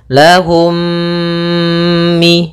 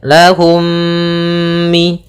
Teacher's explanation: mim yang pertama dimasukkan kepada mim kedua dan ditahan gunnahnya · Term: idgham mimi